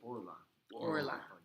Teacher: So it's kamatz katan. It's pronounced o, not a. And look, you see or la.